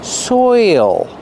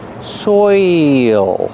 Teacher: You have the oi sound followed by the dark L.